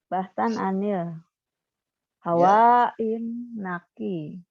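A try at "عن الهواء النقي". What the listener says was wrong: hawa kurang alif itu hawa kurang alif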